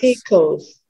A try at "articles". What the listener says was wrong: Articles. And again, you had that little V, yeah? So American, many, not all, but many Americans would make it sound like a D. Articles. Articles. Articles. You can say it both ways. Articles or articles.